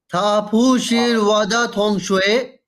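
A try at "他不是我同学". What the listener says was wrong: Okay, दा यूज नहीं हुआ। थापू शिर वाथोंग शुए, वो मेरी वाथोंग शुए।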